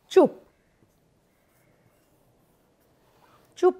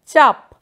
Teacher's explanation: চও যেমন ছিল আছে পও যেমন ছিল আছে শুধু উ আর আ স্বরধ্বনিটা পাল্টেছে